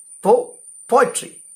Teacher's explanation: followed by two unstressed syllables stressed followed by two unstressed syllables the word poetry itself it's an example for a dactyl with a stressed syllable falling on po